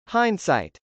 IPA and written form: hˈɑɪndsˌɑɪt (hindsight)